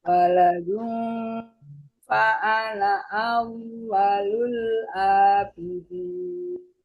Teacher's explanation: Kemudian waladung, ada dengung karena ketemunya huruf fa.